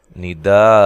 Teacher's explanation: وقف کی صورت میں ایک زبر کو ختم کر کے الف مدہ کے برابر لمبا کریں گے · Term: مد واجب